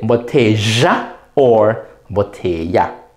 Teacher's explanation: The two L's, do not say la. Never say la with two L's. Make it be a Y sound. Or sometimes the J, they call it a yod in phonology.